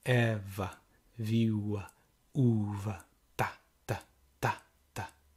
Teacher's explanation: the stress is always in the first syllable, which gives us the rhythm of the sentence.